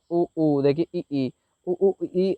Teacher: तो संवृत स्वर को बोलने पर मुंह सबसे कम खुलता है, लगभग बंद रहता है दोस्त। जैसे कि उ ऊ, देखिए ई ई, उ ऊ ई अगर बोला आपने तो आप लोगों ने देखा कि बिल्कुल खुला ही नहीं है मुंह।